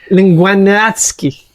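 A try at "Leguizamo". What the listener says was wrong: You keep adding the ski. There's no ski.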